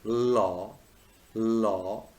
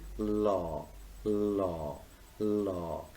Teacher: your tongue tip touches the alveolar ridge and what happens the airstream flows around the sides of the tongue so there is a kind of flow there is a kind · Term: lateral liquid